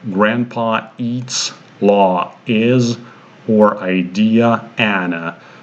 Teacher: we just connect without using the glide consonant